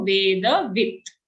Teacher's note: Don't say vedavita. If you say vedavita, the last becomes a full sound, but as you can notice here, it's only a halant or half sound.